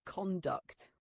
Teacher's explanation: Make sure it sounds like conduct with a slight emphasis on the second syllable.